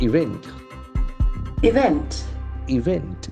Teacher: it has got a slight shift in its pronunciation the second syllable is more important